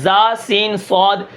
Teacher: صفیر یعنی سیٹی, یہ 3 حرف ہیں, زا سین صاد, ان کے اندر کیا ہوتا ہے, سیٹی ہوتی ہے